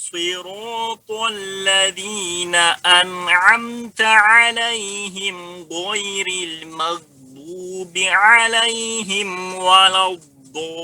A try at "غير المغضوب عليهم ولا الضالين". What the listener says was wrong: Yang pada dad ini butuh latihan ya. Di samping dia huruf itbaq, dia juga huruf istitalah. itu yang betul pada dad. Ya, pada dad ya ada seperti itu.